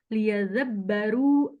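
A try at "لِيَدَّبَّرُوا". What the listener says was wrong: dabbaru. Dab, bukan za ya. Da.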